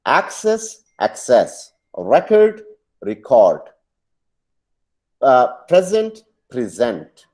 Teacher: सो same words जो कि verb और नाउन के तौर पे यूज होते हैं, हम उसके पहले सिलेबल को स्ट्रेस करेंगे तो वो नाउन बन जाएगा, सेकंड पे करेंगे तो वर्ब बन जाएगा